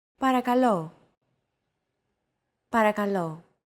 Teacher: Don't forget that words get accentuated in Greek, so make sure to stress that final syllable with the accent mark